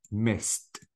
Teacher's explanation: Now I have to pronounce it as T. The D should be replaced with T. And I don't pronounce the E sound at all.